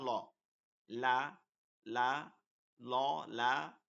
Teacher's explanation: দেখেন জিহ্বাটা কিন্তু সাইডে চলে যায় · জিহ্বার আগার কিনারা সামনের উপরের দাঁতের মাড়ির সঙ্গে লাগে। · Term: লাম